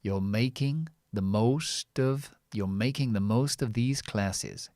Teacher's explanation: American people would say you're, because they would pronounce the R, you're making the most of these classes.